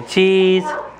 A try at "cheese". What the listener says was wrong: No, not with your tongue. That's gross. With your teeth, say cheese.